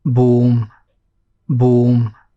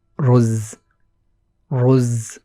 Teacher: The Wa sound after the Ba sound in boom is longer than that after the Ra sound in Ruz